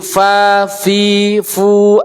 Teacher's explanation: Va itu melazimkan keluar angin-angin tidak terhenti